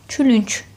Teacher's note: Birinci k elə k səsini ifadə edir. Külünk sözündə c isə tələffüz zamanı özündən sonra heç nə gəlmədiyi üçün k səsinə keçir. Külünk kimi tələffüz olunur.